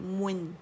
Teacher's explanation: میم پہ جائیں گے، مخرج کے دونوں ہونٹوں کے گیلے سے شفتان سے پکڑیں گے، اس کو رول کریں گے، اور پھر جب نون ساکن پہ جائیں گے تو ان رول ہو جائیں گے. گولائی سے آواز نون ساکن کی طرف جائے گی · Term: میم ضمتین